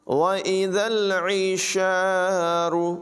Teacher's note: عین کی آواز جو ہے اس کو حلق سے نکالیں گے۔ وَإِذَا الْعِشَارُ، را کو پر پڑھیں گے۔